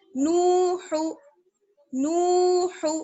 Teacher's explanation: ہا کو بالکل نہیں کھینچنا ہے